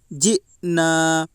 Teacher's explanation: الف مدہ کو ایک الف کے برابر کھینچ کر پڑھیں